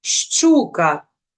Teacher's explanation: буква ща означає два звуки ш і ч у даному слові вони обидва тверді